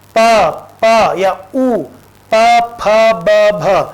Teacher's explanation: ऊ और प वर्ग पूरा जो है वो ओष्ठ से उच्चारित होता है, इसका उच्चारण स्थान ओष्ठ है, इसलिए इनको ओष्ठ्य वर्ण कहा जाता है।